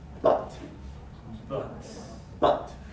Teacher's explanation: a stressed mid-central vowel as in the word but